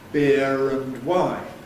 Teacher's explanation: we lost the R in beer, but we retained it if the next word begins with a vowel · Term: linking R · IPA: [ˈbɪər ənd ˈwaɪn]